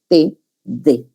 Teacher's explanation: Dental, el ápice de la lengua se ubica entre los dientes